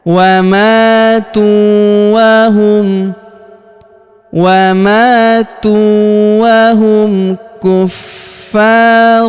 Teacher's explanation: huruf fa kita tahan dan tekan karena terdapat tanda tasydid di atasnya, lalu kita panjangkan 2 harokat karena alif di depannya